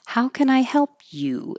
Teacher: This is a how question, like a WH question. It's the answer can't be yes or no. Then the whole pitch comes down.